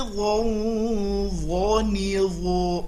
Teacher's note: Harus keluar lidahnya. Kalau tidak bunyinya menjadi zo, zi, zu. Itu huruf zal yang ditebalkan. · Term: huruf dho